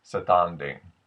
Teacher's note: the ass sound from general American becomes closer to an AA or an aw aw in Japanese · the ah sound from General American becomes closer to an ah or an aw, A-W, in Japanese. So the word standing, which comes up in the song quite a bit that we're going to practice, becomes closer to satanding.